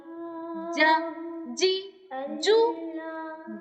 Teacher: جیم کو دونوں جبڑے بیچ کر زبان کا بالکل جو درمیان ہے اس کو تالو کے ساتھ لگا کر ادا کرنا ہے